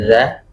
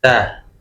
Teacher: kalau za ada getaran, za, tapi kalau ta tidak ada getaran sama sekali ya